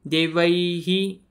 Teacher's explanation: मध्ये सर्वात शेवटी म्हणजे ऐ मध्ये इ येतोय इ सारखा आपल्याला आवाज येतोय त्याच्यामध्ये इ स्वर मिसळला गेलेला आहे